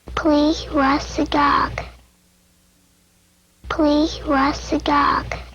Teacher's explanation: a speaker with a repaired cleft palate producing mid dorsum palatal stops for t and d